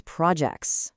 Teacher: The stress shifts right over to that second syllable. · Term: noun verb stress rule